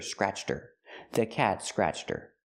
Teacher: Her is not a stressed word, so the H is silent.